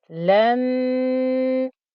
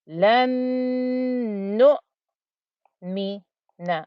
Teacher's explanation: I must hold the ghunna on the noon with the shadda.